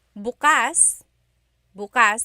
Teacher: the emphasis is on the second syllable that means open